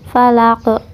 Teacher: Kemudian falaq, falaq itu qalqalah, qalqalah kubro ya, kalau di akhir ayat itu qalqalah kubro, yaitu pantulannya besar ya, ada huruf qalqalah yang disukunkan karena waqaf.